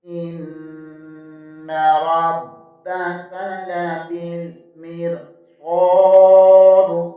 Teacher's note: وقت کی صورت میں دال کو ساکن کر دیں گے، اور یہاں بھی قلقلہ ہوگا · حمزہ زیر کو نون کے ساتھ ملائیں گے، نون مشدد ہے، اسے دو بار پڑھیں گے